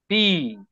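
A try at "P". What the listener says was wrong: it's not পি it's ফি ফি দুইটা ঠুট ঠুট একসাথে করবেন আর মানে জোরে আওয়াজ দিয়ে মুখ থেকে বের করবেন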